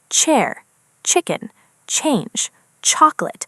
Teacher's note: The sound begins with a tiny burst before it continues.